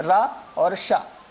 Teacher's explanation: इनका उच्चारण मूर्धा के द्वारा होने से यह मूर्धन्य वर्ण कहे जाते हैं